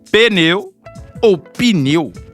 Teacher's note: há sempre uma vogal depois dividindo a sílaba única em duas